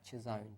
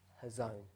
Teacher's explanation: most of the time we pronounce it with a CH, a ch sound, but I think in the original it's actually a h. It's a silent C, and I think it's hazon is the actual original way to pronounce this word.